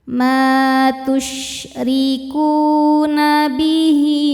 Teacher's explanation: Ku hukumnya mad thobi'i zohiri. Sebab ada wau sukun sebelumnya berharakat dommah. Cara bacanya panjang dua harakat.